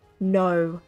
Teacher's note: We don't say it with the R. We say like no as in we extend the O sound.